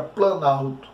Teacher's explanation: Então, a palavra planalto, houve perda, né, no som da palavra plano. Então, o O aí some plano, sumiu, ficou planalto. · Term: aglutinação